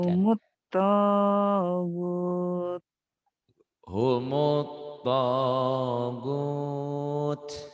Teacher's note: Gotnya jadi panjang, jadi mad dari disukun karena dihentikan.